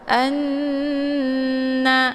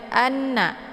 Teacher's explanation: Jadi cara bacanya yaitu ditekan a-nya kemudian dileburkan, dimasukkan suaranya ke dalam huruf nun sambil ditahan 2 harokat. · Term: gunnah musyaddadah